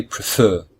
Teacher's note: there are two syllables and the second syllable is stressed · So the verb ends in a single vowel, a single consonant, which is not a letter W, X or Y. There are 2 syllables, and the second syllable is stressed.